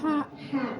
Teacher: Tapi H-nya bukan keluar dari rongga mulut tapi dari tenggorokan.